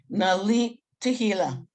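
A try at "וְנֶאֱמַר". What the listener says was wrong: Almost. The first one is vi. Hila. Vilit Hila.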